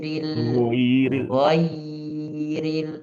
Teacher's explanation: Ya, presentasinya kurang. G dia agak sedikit menipis karena yanya di depannya adalah huruf yang tipis bukan gak giril giril.